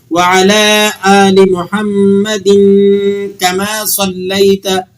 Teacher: اب اگر دوسرے نیکسٹ لفظ جو محمد ہے اس پر آپ وقف کر رہے ہیں تو پھر آپ نے اس کو ساکن کر دینا ہے محمد، اور اگر آپ آگے ملا کر پڑھنا چاہتے ہیں اسے تو پھر اس کی دال دو زیر دن کی جو تنوین ہے اس پر آپ نے غنہ ادا کرنا ہے اور پھر اسے آگے والے لفظ کما کے ساتھ جوڑ دینا ہے